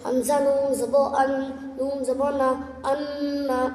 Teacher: نون میں متشدد گنہ ہوگا ناک میں تھوڑی آواز رکنا گنہ کراتا ہے